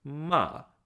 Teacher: it starts at the high pitch and it falls to the low pitch